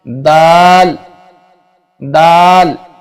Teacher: जबान की नोक और सामने के ऊपर वाले दो दांतों की जड़ों से अदा होता है